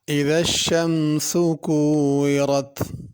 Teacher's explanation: اذا الشمس کورت، اذا الشمس میں اذا میں ذال ہے، اس کو ذا کر کے نہیں پڑھنا۔ شمسو میں سین ہے، اس کو ثا یا صاد نہیں پڑھنا، اور شمسو کے اوپر پیش ہے تو اسی طرح پڑھنا اذا الشمسو، اس کو زیادہ کھینچنا نہیں ہے، اذا الشمسو کر کے نہیں پڑھنا۔